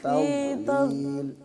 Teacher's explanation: را کو موٹا پڑھنا ہے